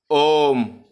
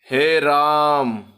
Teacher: इन स्वरों के उच्चारण में ह्रस्व स्वर से क्या होता है, 3 गुना टाइम लगता है। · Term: प्लुत स्वर